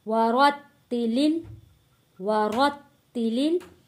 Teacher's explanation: را کو موٹا پڑھیں گے، را کو تا تشدید والے کے ساتھ ہم نے جوڑ کے پڑھنا ہے